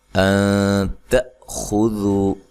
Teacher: نون ساکن کا یہاں اخفا مع الغنہ ہے، تا کو باریک پڑھنا ہے، حمزہ کو جھٹکے سے ادا کرنا ہے۔